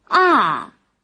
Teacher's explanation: 第4声是去声，由高向下降